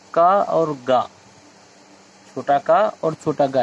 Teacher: अल्प प्राण में का और गा, छोटा का और छोटा गा ये आपके अल्प प्राण माने गए हैं